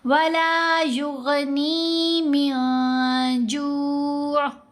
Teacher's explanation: اخفا کرتے ہوئے نون کی آواز کو ناک میں چھپا کر بھی پڑھا جائے گا اور اس کے اوپر غنہ بھی کیا جائے گا